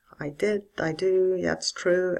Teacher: the learner answering should try to say I did I do that's true etc using a falling tone